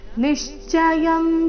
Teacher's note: ಮೊದಲನೇ ಅಕ್ಷರ ಮೇಲೆ ಆಘಾತ